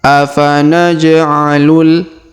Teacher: huruf ja berharakat sukun, maka kita berikan pantulannya atau kita pantulkan huruf ja-nya atau kita qalqalahkan. Qalqalah sughra.